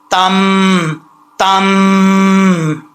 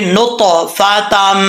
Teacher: जब मिलाएंगे इदगाम होगा तो एक अलिफ की मिकदार गुन्ना किया जाएगा। कैसे, ता मीम दो ज़बर, तम तम।